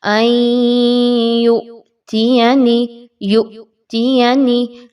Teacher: حمزہ ساکن کا جھٹکا اچھے سے دیجئے